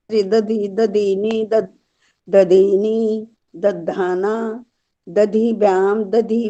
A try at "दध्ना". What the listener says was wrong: दधना दधिभ्याम दधिभी, दधाना नहीं है, दधना।